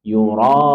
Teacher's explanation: Yang akhir yang mad alil sukun kita baca juga empat harakat. Boleh dua, empat atau enam harakat.